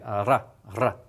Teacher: There is rolling to this. Okay, particularly if it's doubled.